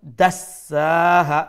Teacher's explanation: sin has a shadda double sound and due to the standing fatha one alif long then ha again আমরা এখানেও এক আলিফ লম্বা করিয়া stop করবো